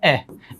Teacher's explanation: ए स्वर का उच्चारण अपन जीभ के मध्य भाग से करते हैं, इसलिए ये मध्य स्वर की श्रेणी के अंतर्गत आता है।